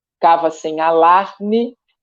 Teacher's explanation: a última sílaba depois da tônica, ela quase não é pronunciada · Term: sílaba tônica